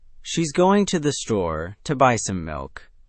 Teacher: she's to the and to buy some all get compressed and quick, while going store and milk get real weight.